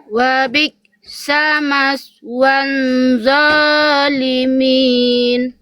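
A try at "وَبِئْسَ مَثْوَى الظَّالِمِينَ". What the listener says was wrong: Bunda di sini nggak ada huruf nun ya, nggak boleh maswan zalimin, nggak ada nun, nggak ada en, langsung zo. Maswan zalimin. Nggak ada nun, nggak pakai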